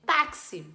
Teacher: na hora que eu vou pronunciar esse X tem som de KS essa letra Única produz dois sons então táxi tem quatro letras